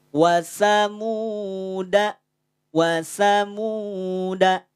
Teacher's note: Dal Jangan dibaca panjang dalnya dibaca satu harakat saja dibaca pendek